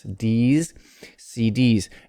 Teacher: the name of the letter ends in a vowel d d so the s becomes voiced